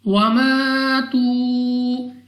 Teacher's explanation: الف سے پہلے زبر الف مدہ 2 سیکنڈ تک لمبا کرنا ہے، اس کے بعد واو مدہ، اس کو بھی 2 سیکنڈ تک کھینچ کر پڑھا جائے گا۔